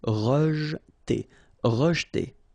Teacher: here the E is not really pronounced, so you get rej.